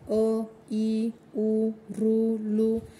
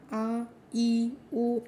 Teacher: अ, ई, उ, ऋ, लू यांचा हा उच्चार आखूड असतो आणि हे उच्चाराला कमी वेळ लागतो. दीर्घ स्वरांना आ, ई, उ लांबट उच्चार होतो आणि जास्त वेळ लागतो